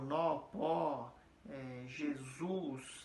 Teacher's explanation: São palavras que a força dela está na última sílaba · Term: oxítona